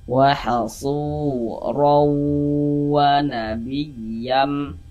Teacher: Maka ini huruf ra ini kalau dia memiliki tanda baca baris 2 di atas seperti ini, atau misalnya baris 1 atau baris 2 begitu ya, fathah atau fathatain, maka huruf ra dibaca tafkhim, dibaca tebal, sehingga pangkal lidah kita naik terangkat ke atas ketika kita mengucapkan.